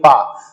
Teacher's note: जब बोलिए पा तो इसका मतलब दोनों ओठ जो है मिल रहा है। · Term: ओष्ठ